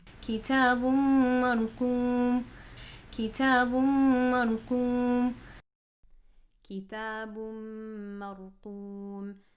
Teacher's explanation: What you're going to hear is a lot of air in the ta, okay? You're going to hear a lot more air than it should have.